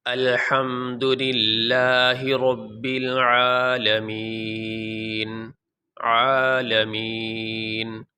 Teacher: وقف کرنے کی صورت میں یہ جو نون کے اوپر زبر ہے یہ نہیں پڑھا جائے گا، نون کو ہم ساکن پڑھیں گے